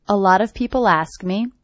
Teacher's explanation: the first thing I notice is this T is a flap T. It sounds like a D.